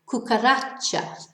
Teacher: has a natural stress on the last but one syllable